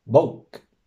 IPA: boʊːk